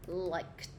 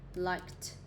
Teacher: Âm k, là âm ra hơi mà không rung cổ họng